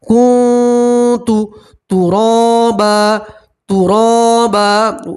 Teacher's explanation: نون سکین کی آواز کو آپ ناک میں چھپائیں گے اور ایک الف کے برابر گننا بھی کریں گے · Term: نون سکین کا اکفا